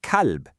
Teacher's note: out pops a soft English K sound, and you accidentally say kalb